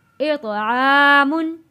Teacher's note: मीम दो पेश मुन, तनवीन पे हमने गुन्ना अदा नहीं किया क्योंकि हरूफ़े हल्की आ गया।